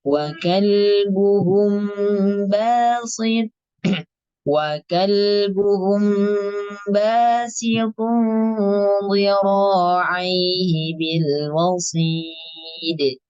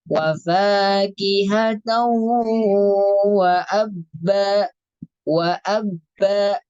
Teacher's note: ya tidak mengeluarkan nafas untuk khusus huruf ba. Dan huruf ba tadi memiliki sifat khusus yaitu qalqalah.